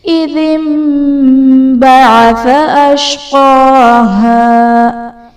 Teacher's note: اذ انبعث میں نون ساکن کے بعد حرف با ہے تو یہاں پر نون ساکن کو ہم میم سے بدل کر اخفا کریں گے، یعنی غنہ کر کے پڑھیں گے تو یہاں پر اقلاب کا قاعدہ ہوگا.